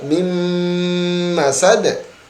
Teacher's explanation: Nunnya hilang. Harusnya min masad, tetapi langsung dimasukkan ke dalam huruf mim